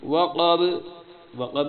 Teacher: وقب میں قاف موٹی ہے، با جو ہے اس پہ قلقلہ ہوگا، جس اوپر فلک پہ قلقلہ تھا اس طرح وقب با پہ بھی قلقلہ ہوگا۔